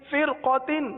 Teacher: را ساکن کے آگے قاف، قاف حروف مستعلیہ میں سے ہے، اس لیے را کو پر پڑھیں گے